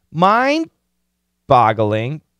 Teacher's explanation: but don't finish the D stop mine boggling boggling it's a short o mind boggling yeah it's